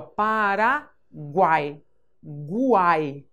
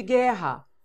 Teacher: Aqui eu ouço o som da letra U, diferente de guerra.